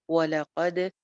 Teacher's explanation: وَلَقَدْ وَلَ سنگل حرکت، قد قاف موٹا اور دال پہ کلکلا، دال کی آواز باؤنسی ہو جائے گی